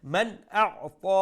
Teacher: সাকিন আমরা ইজহার করি ফরমু without any nasal sound man a'ta ta is a full mouth letter and we'll stretch it one alif long due to the standing fatha